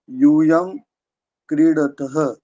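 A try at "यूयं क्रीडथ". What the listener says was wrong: क्रीडस में अभी भी सी जो है दीर्घ ही हो रहा है और वो इतनी जल्दी दीर्घ ह्रस्व होगा भी नहीं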